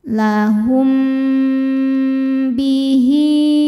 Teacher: Ada hukum ikhfa syafawi karena mim sukun menghadapi huruf ba. Cara bacanya berdengung. Tahan dengungannya kurang lebih dua harakat. Lahum bihi.